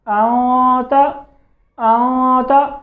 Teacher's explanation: यहाँ पे इख्फा में ना दोनों होंठ आपस में मिले हैं और ना ही जो ज़बान है वो ऊपर तालू पे लगी है। तो ये सिर्फ नाखशूम से आवाज़ आ रही है।